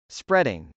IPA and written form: sprˈɛdɪŋ (spreading)